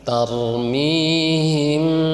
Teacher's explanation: Ikhfa itu artinya samar. Jadi disamarkan mimnya itu. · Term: ikhfa syafawi